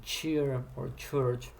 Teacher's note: You articulate the T and the sh at the same time, and they together form a phoneme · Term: affricates